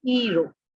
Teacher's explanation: in Sri Lanka we say iru, and we drop the H